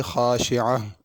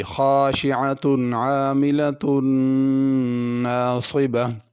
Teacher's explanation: اگر اس آیت پہ رکنا ہو تو ہا پڑھیں گے، خاشعہ۔ اگر ملا کے پڑھنا ہو تو پھر تا پڑھی جائے گی، خاشعۃ عاملۃ ناصبہ۔